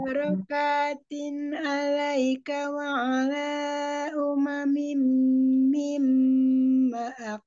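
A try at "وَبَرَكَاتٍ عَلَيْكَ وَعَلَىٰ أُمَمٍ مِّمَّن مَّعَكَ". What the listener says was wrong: Mamak, mamak, nun sukun ketemu mim idgham bi guna. Mamak, maak. Jadi ada tiga tempat gunanya ada. Gunanya ada tiga tempat ya. Mim, mim, mim. itu mam itu guna juga. Kemudian mat jaisnya hati-hati ya, barusan terlewat. Wala.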